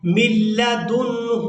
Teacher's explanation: قیما لینذر بأسا شدیدا من لدنه ويبشر المؤمنین الذین من لدنه، یہاں ہم نے میم کو لام مشدد کے ساتھ ملانا ہے، نون ساکن کو چھوڑ دیں گے